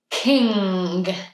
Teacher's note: that N sound, we don't make it in the front like we normally would N. And then go to the back for GG.